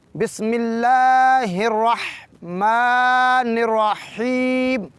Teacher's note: بسم اللہ کی لام کو، اللہ کے لام کو لمبا کرنا ہے 2 حرکات کے برابر۔ · الرحمن کی میم کے پر ایک چھوٹی الف ہے، الف مدی کہیں گے، اس کو بھی لمبا کریں گے 2 حرکات کے برابر۔